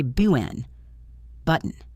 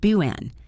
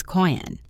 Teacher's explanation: Now, native speakers use this all the time for the letter T. If a T comes after a vowel and before an N sound, we often do not say the T, we just stop the air. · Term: glottal stop